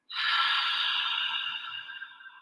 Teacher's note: I'm going to inhale through my nose, just a nice full breath in, and then out the mouth. So making that real breathy, soft ha sound from the back of the throat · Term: the ha breath